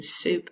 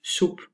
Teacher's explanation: In Dutch, this s and z sound, they have oo resonance. You use rounded lips, creating a different, warmer sound, which is called oo resonance, and you hush. Whereas in RP, you hiss. · E resonance occurs in RP sounds s and z, and you can clearly hear the difference between soup and soep.